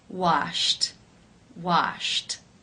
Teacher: The final sound in infinitive form is sh, the unvoiced sh sound. Since it is unvoiced, it is case 1, where the ed is pronounced as a t.